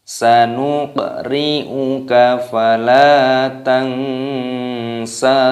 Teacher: Qafnya berharokat sukun di sini diqalqalah